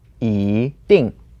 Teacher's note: the E word changes to the second tone because it's paired with 定, which is the fourth tone. So it becomes 一定.